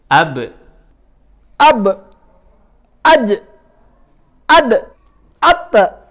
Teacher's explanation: lima huruf ini saat sukun suaranya dipantulin karena mereka punya sifat qolqalah AB AJ ad tiga huruf ini suara pantulannya tipis a a